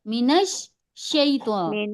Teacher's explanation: کیونکہ شین پہ تشدید ہے، اور تشدید والے حرف کو ہم 2 بار پڑھتے ہیں، تو 2 بار اس کی آواز سمجھ میں آنا چاہیے